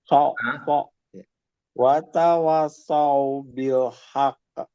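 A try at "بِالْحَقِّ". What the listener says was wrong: Haqq. Jangan haqq langsung. Kasih tempo 2 harokat. Bil haqq. Bil haqq.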